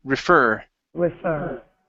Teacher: the word refer the stress is on the end of the word